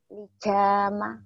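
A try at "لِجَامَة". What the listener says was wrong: Lija, lija, lija. Jangan dija, lijama.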